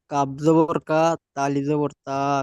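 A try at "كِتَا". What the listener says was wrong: কাব জাবার নেই, দেখে পড়েন। কি আছে? কাব জাবার আছে?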